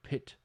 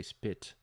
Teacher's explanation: So if you put your hand in front of your mouth when you're saying pit, right, you notice that there's a little puff of air, but when you say spit, it's not as noticeable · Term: aspiration